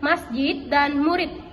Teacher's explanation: fonem D dilafalkan menjadi T